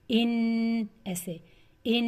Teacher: ان نون مشدد پر میں 2 کاؤنٹ دے رہی ہوں غنہ کرنے کے لیے